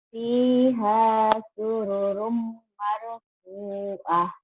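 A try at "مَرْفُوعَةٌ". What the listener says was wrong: Ainnya keluar. Marfu'ah. Marfu'ah. Tangan panjang. Fiha sururum marfu'ah. Marfu'ah lagi. Marfu'ah ya.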